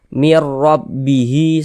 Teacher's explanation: Tapi dibaca mir. Melebur masuk ke huruf ro. Kemudian dia dibaca pendek karena dia tidak didengungkan. Jadi baca pendek saja.